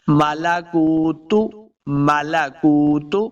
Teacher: تا کو موٹا نہیں کریں گے